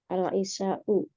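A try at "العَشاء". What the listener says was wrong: Al-asya ini pakai fathah Kalau al-isya ya sholat isya.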